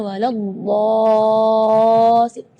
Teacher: Mad di situ kita harus panjang membacanya 6 harakat karena di situ hukumnya mad lazim kalimi mutsaqqal.